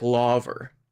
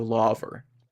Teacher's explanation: Brits will say things like lavver instead of lava, even if they're ending their sentence. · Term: lingering R